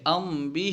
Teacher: میم کی آواز کو پوشیدہ کر کے پڑھیں گے، جیسے ام بھی پر ظاہر کر کے نہیں پڑھیں گے، ام بھی، ٹھیک ہے۔ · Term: اخفا